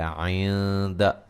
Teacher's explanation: عند یہاں نون ساکن کا باریک اخفا ہے، یعنی کہ غنہ کر کے پڑھیں گے